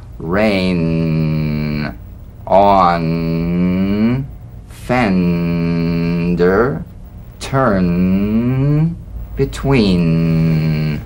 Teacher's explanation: a nasal consonant made with the tongue blade to the upper gum Ridge its most resonant and it's well forward placed it's a melodic